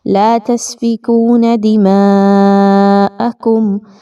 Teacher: لا تسفکون دماءکم، اب اس میں خاص توجہ، میثاقکم کے بعد لام کا حرف آ رہا ہے اور دماءکم کے بعد واو کا حرف آ رہا ہے، تو یہاں پر آپ نے اظہار شفوی کرنا ہے، یعنی میم پر کسی طرح کا غنہ نہیں ہوگا، آواز ناک میں نہیں جائے گی میم کی، بلکہ بہت کلیئرلی پڑھی جائے گی اور ادائیگی کوئکلی کی جائے گی۔